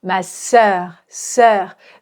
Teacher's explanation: Ici, je vais faire tomber l'intonation ma sœur, sœur. Je fais tomber l'intonation parce que c'est une phrase qui est déclarative. Et en fait, pour faire comprendre à l'autre personne que j'ai terminé ma phrase, alors je fais tomber l'intonation.